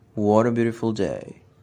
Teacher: Simple fall pattern of intonation, meaning when said perfunctorily.